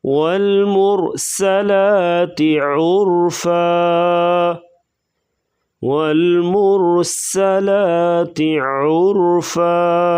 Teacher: مر را کو پر پڑھا جائے گا، را ساکن ما قبل پیش، تو را کو پر پڑھیں گے۔ سا سین سیٹی جیسی آواز، عرف عین گلے سے ادا کریں گے، را ساکن ما قبل پیش، تو را کو پر پڑھا جائے گا۔